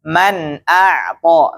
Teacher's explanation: Ini harus dibaca jelas, Pak. Nun sukunnya dibaca jelas